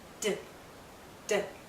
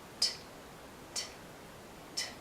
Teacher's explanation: This has a longer vowel sound because the D is a voice sound. D, D. T is unvoiced, voiceless, no sound. T, T, T. No sound from our voice.